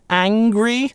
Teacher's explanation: в британском английском здесь в первом слоге будет /æ/, angry, американцы реализуют этот звук перед [ŋ] как [eɪ], angry.